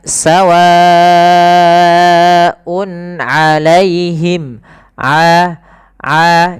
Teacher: sepanjang empat harakat atau lima harakat kemudian berlafal UN alaihim ini bedakan antara Hamzah dan Ain ya jangan sawaun alaihim jangan kedua-duanya Hamzah